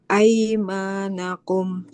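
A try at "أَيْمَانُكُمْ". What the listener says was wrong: Bukan aimanakum. Aimanukum. Harokatnya koma, bukan fathah.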